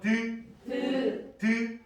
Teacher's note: 이빨 바로 뒤에 있는 위에 잇몸 뒤쪽을 혀 앞쪽이 툭 치고 내려와요. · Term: 치조음